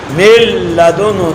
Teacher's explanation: نون کا لام میں مکمل ادغام ہوگا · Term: ادغام تام